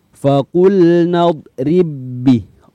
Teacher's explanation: tanda suhunya tidak ditulis ya dan yang baik yang kedua berharokat maka bak yang pertama dimasukkan ke BAK yang kedua dan sifat qalqalahnya dihilangkan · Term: Idgham Mutamatsilain